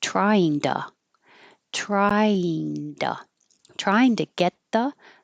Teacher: the t changes to d, because it's between two voiced sounds. And you can always change to tuh, the vowel so now it's duh.